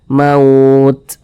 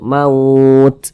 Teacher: Sedangkan huruf ta ini salah satu huruf yang memiliki sifat hamas. Nah, jadi ketika kita mengucapkannya itu maka ada napas yang kita alirkan. Akan tetapi kalau huruf ta ini dia alirannya itu seperti memercik saja sehingga kita baca maut.